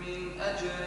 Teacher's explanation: اظهر النون عند حرف الحلق